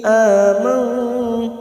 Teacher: nun sukun bertemu ta, ikhfa hakiki kita samarkan bunyi nun sukun 2 atau 3 harokat